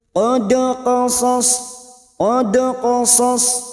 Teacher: Wa rusulan qad qasas, qad, dal sukun qalqala sugra yang mati asli di tengah kalimat, jangan lupa dipantulkan